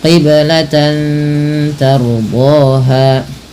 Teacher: Ra apabila didahului dengan huruf fathah maka dibaca dengan ra tafkhim, ra yang dibaca dengan tebal